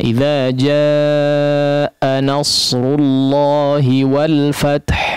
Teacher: Maka bacalah mad wajib muttasil tersebut dengan panjang arba'an wa khamsan, 4 atau 5 harakat.